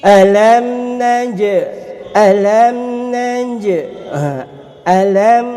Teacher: Alam naj, alam naj, alam jelas. Naj ada qalqalah sughra, huruf jim kat sini. Naj, sikit je pantulan dia.